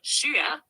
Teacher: let's practice it together being first tone high and steady Shia third tone starts low dips then Rises